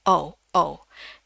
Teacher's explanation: Ya, jadi mulutnya agak kayak ngerucut dikit ya, jadi kayak monyong dikit. Oh, tapi bentuknya tuh o ya, jadi betul-betul bulat terus dikecilin.